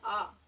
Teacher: जिनका उच्चारण करते इसमें हमारा मुख लगभग खुला रहता है उन्हें कहते हैं विवृत स्वर